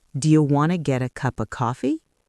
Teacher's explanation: Now, let's look at want to. This reduces to wanna. · The words get a become get a and cup of becomes cupa.